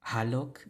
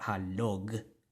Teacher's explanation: So we have a voiceless velar sound and a voiced velar sound, the g and the k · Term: velar consonant sound